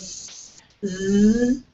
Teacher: So you feel your tongue moving back, zzz, right? So your tongue is on that alveolar ridge, right? So it's alveolar fricative, voiced and unvoiced.